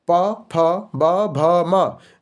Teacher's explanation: प फ ब भ म व्यंजन में होते हैं। ये ओष्ठ है।